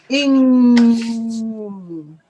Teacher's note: You're not pronouncing the G. It's at the back of your throat. Your tongue goes up, and this is the sound. Ing. Your tongue is to the top of your mouth. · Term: NG sound